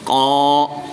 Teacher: الف سے پہلے قاف پر زبر ہے تو اس لیے اس الف مدہ ہوگا، ایک الف یعنی 2 حرکات کے برابر کھینچ کر پڑھیں گے۔